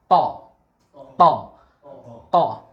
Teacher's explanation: Pangkal apa? Ujung lidah ketemu dengan gigi seri bagian atas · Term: huruf to